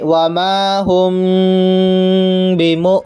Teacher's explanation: حمزہ ساکینہ کو جھٹکا دے کر پڑھیں گے